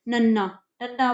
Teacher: ਇਹਨਾਂ ਦੇ ਉਚਾਰਨ ਵੇਲੇ ਜਿਹੜੀ ਸਾਹ ਦੀ ਹਵਾ ਜਿਹੜੀ ਹੈਗੀ ਆ ਉਹ ਨੱਕ ਦੇ ਵਿੱਚੋਂ ਬਾਹਰ ਆ ਰਹੀ ਹੈ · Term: ਨਾਸਕੀ ਵਿਅੰਜਨ ਧੁਨੀਆਂ